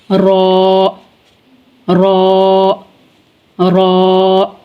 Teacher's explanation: नोक जुबान माइल बा पुश्त और मुकाबिल का तालू